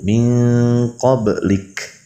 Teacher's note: ketika ikhfa ab'ad yang terasanya itu adalah bagian lisan yang dekat kepada tenggorokan · Qablik huruf kaf di situ ada hamas sifatnya, maka cara membacanya seperti tadi, yaitu min qablik.